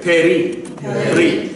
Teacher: There's no vowel sound there. So it's going to go from the p to the resh very quickly.